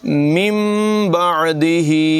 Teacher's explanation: جب نون ساکن کے بعد با آ جائے تو پھر وہاں پر اقلاب ہوتا ہے، یعنی نون کو میم سے بدل کر پڑھا جاتا ہے